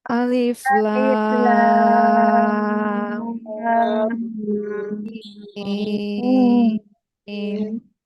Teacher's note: Ingat, mimnya di 6 harokat kan setelah dengung.